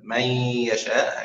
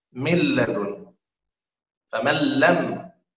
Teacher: يعني هذا إدغام فيه غنة أثناء القراءة من يشاء هكذا، والإدغام في اللام والراء لا يوجد فيه غنة، لذلك نسميه إدغام كامل.